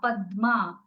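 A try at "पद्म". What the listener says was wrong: Not Padma. Don't give lot of vowel there. Say Padma.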